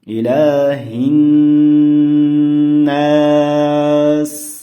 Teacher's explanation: Ilada cho'zilish bor, mana bu joyda ko'ryapsizlar, bir alif kelyapti, buni biroz cho'zamiz.